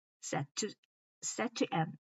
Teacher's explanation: when pronouncing set to end, the t sound is linked and flows smoothly